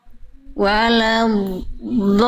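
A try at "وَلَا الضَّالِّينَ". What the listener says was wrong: Udah bagus, tinggal dia tebalkan lagi sedikit, sama tadi agak ada nafas bocor sedikit. Nah, ada gitu jangan. Karena kan sifatnya jahar. Dot itu jadi gak boleh ada suara yang mengalir, nafas yang mengalir. Walamolin.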